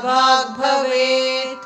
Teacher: Bha is Mahapranaksharam in both the places.